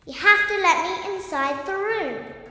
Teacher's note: Some very clear T sounds, even a few glottal stops in there.